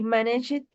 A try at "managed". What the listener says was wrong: Con la T. Managed. With the T.